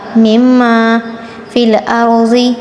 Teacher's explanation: را اور ضاد پر تفخیم کریں گے